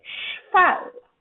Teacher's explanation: la caractéristique sourde de la consonne ch se transfère à la consonne v de cheval et la fait transformer en f